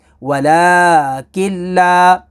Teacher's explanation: اب یہاں پر نون ساکن ہے اور اس کے بعد اگلا لیٹر لام ہے، لام حروف یرملون میں سے تو یہاں پر ادغام ہوگا، یعنی غنہ نہیں کریں گے، لام اور را میں غنہ نہیں ہوتا۔